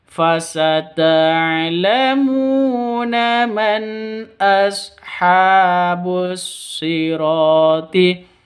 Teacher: Ha panjang dua ketukan karena ada tanda berdiri di atasnya